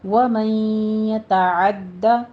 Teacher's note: نون ساکن کا قاعدہ ادغام بالغنہ کریں گے، پہلے 2 کاؤنٹ کرنا ہے اور دال کے اوپر سختی کیجیے، تشدید ہے۔ ومن یتعد، آگے حدود اللہ میں وہی پیچھے والی تطبیق ہے۔